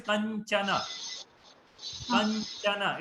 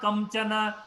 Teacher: Kanchana cha is coming from the talavya. So the nasal sound also should come from the talavya. So that's why it is kanchana. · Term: Anuswara